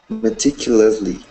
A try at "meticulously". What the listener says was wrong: Perfect, perfect. You're getting better.